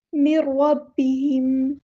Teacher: یہاں پر نون ساکن کے بعد را ہے تو ادغام ہوگا، ادغام بلا گناہ، ادغام کامل